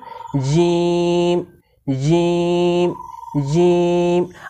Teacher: জিম হরফকে জিহবার মাঝখান থেকে শক্ত করে পড়তে হয়